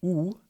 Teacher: If you say the sound E, you should notice that your lips become spread, almost like you're smiling. If you say U, you'll notice that your lips become pulled together. They become tighter and rounded.